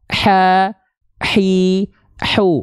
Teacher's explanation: nanti si katup epiglotis itu dia akan menyempit ke arah dinding tenggorokan kita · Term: ha kecil, H kecil